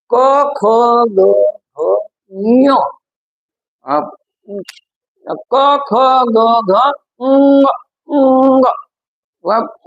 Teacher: या पाच वर्णांचा उच्चार जो आहे तो उच्चार आपल्या कंठामधून होतो